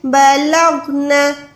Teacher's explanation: غین کو موٹا بالکل رکھیں لیکن آواز کو نہیں لوٹائیں۔ بلغنا بلغنا، دونوں میں فرق ہے، غین کو آواز کو آپ نہیں لوٹا سکتے۔ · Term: غین ساکن